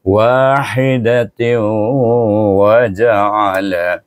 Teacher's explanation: Baik, tanwin betul dengan huruf waw, nak idgham ma'al gunnahkan juga dengan dengung dua harakat pada huruf waw. Walaupun dihazafkan zat nun tu hilang, tetapi dia masih dengung pada waw.